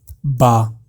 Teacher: با با میں کیا کرنا ہے کہ با کو جب بھی آپ پڑھو گے تو دو آپ کے جو لپس ہیں، جو آپ کے ہونٹ ہیں، ان دونوں کو آپ پہلے آپس میں جوڑیں گے، اور جب آپ با کریں گے تو وہ الگ ہو جائیں گے۔